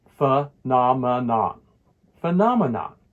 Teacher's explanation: The stress falls on the second syllable, the na sound.